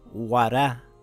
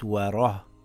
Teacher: It's not wara, it's wara with a heavy sound.